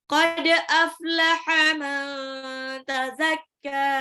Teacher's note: man tazakka nun sukun ketemu ta ikfa, jadi nunnya harus samar.